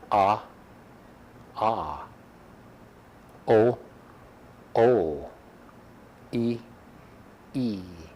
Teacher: So the difference between a short A and a long A is that the long A is twice as long in time